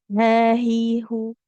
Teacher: Sedangkan huruf ha ada di pangkal tenggorokan